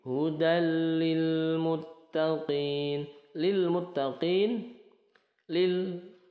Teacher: lam sukunnya tidak dipantulkan ya, tidak seperti ini lil muttaqin, qin mad arid lis sukun.